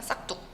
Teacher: 기역 받침 뒤에 당연히 자연스럽게 이 디귿이 된소리로 되는 그런 현상이에요